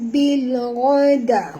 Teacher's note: huruf ghain kena baca tebal, jangan baca gha. Kalau baca gha tak tepat ya.